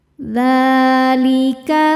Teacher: Sebab ada huruf dal dengan harakat fathah panjang. Cara bacanya kita panjangkan dua harakat. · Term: mad thobi'i muqaddar